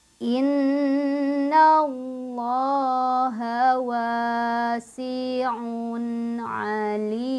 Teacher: Nun bertasydid, mim bertasydid, sama-sama ditahan, sama-sama didengungkan.